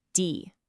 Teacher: It's not a short e sound, okay? It's a nice long drawn out e. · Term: long e sound